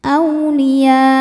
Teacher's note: Jadi panjangkan dulu ya-nya, kemudian di belakangnya dipakai nabar, dinaikkan sedikit intonasinya.